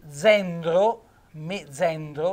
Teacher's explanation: sentite la Z dolce, la E aperta, è il genero